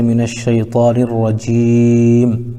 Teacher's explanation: من الشیطان الرجیم میں نر میں الف لام کے بعد حروف شمسی میں سے را آ رہا ہے، اس لیے بعد والے حرف سے ملا کر پڑھیں گے، جیسے من الشیطان الرجیم۔ جیم میں یا ساکن سے پہلے جیم کے نیچے زیر ہے، اس لیے یا مدہ ہوگا، ان کو تھوڑا کھینچ کر پڑھیں گے۔ میم میں وقف کرنے کی وجہ سے میم کو ساکن کر کے پڑھیں گے، جیسے من الشیطان الرجیم۔